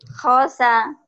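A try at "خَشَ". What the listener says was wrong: Khosa. Shin. Shinnya Ibu belum keluar ya. Khosa.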